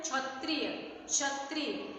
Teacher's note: क की ध्वनि हमारे गले तक ही रह जा रही है, वो बाहर नहीं आ रही है।